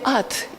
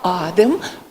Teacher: Ну, на верхнем рисунке представлена словоформа «адем», имя мое, то есть в слове «ад» имя «а» краткое, а в «адем» происходит существенное удлинение гласного «а» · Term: позиционная долгота